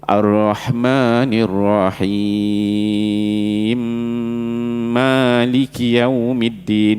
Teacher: Idgham kabir tu mim pertama masuk mim kedua, dia sabdu terus.